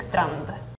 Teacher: we pronounce the D as like a pretty harsh and like short sound